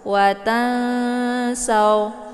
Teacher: nunnya disamarkan dulu, kemudian siap-siap masuk ke huruf sa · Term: ikhfa awsat